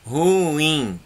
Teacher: O in é mais forte. Logo, vai ser considerada a sílaba tônica.